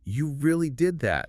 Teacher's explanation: The words form a statement, but the rising tone shows surprise and seeks confirmation. Gotcha. It's subtle, but critical for understanding the speaker's true intent and emotion.